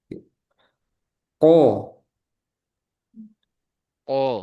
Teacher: Kemudian huruf qaf dia juga termasuk isti'lah. Pangkal lidah naik ketika huruf qaf dibacakan.